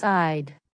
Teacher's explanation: Both had and would become D. · In natural spoken English, I had becomes eyed.